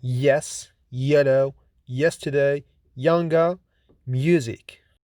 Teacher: Y is voiced palatal glide or semivowel approximant consonant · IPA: /j/